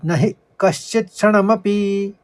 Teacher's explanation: न को ह्रस्व पढ़ेंगे, हल्के से पढ़ेंगे जल्दी, जैसे नहीं कहते हम एकदम।